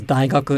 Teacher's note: it starts low goes high and stays high